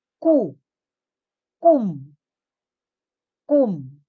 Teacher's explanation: You pronounce it as strong but not overacting. Walang dapat H na sound. Okay, dapat strong. · Strong but not aspirated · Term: double consonant K